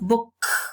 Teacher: the case of book it's pay attention to the last sound if we touch our throat we can't perceive any vibration of the vocal cords so is voiceless that means that the plural morpheme is going